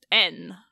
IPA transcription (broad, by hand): n